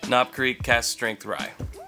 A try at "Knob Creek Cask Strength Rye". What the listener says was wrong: Yeah, but you had to pause just a little bit,